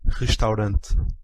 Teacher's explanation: This is voiceless uvular or voiceless velar fricative.